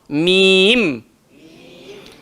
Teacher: hanya sebatas meletakkan bibir atas ke atas bibir bawah